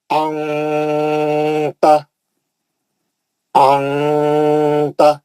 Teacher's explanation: नून की आवाज को नाक में लेके चले जाना और गुन्ना करके नाक से पढ़ना